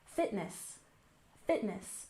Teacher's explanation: First off, we have fitness. We stress the first syllable